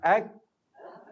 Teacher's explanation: Jadi kaf ni pangkal lidah sesama qaf, tapi dia telah ke depan sikit dan telah membetuli antara lelangit yang lembut dan keras. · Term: huruf kaf